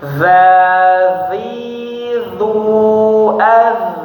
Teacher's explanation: Jadi ada gesekan antara lidah dengan giginya.